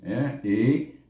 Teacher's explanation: bunyinya i daripada pangkal halkum